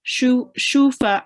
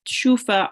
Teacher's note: the ayn will be made a tiny bit longer because it has to be 4 to 6 seconds. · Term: madde kabir